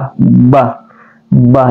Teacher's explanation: dia adalah ee asyafatain atau kel di bibir B bah bah jadi ketemu bibir atas bibir bawah B